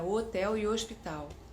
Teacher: O sotaque do Nordeste, primeiro, fecha os Os e fecha os Es